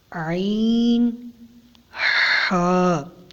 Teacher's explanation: حلق کے درمیان والے حصے سے ادا ہوتا ہے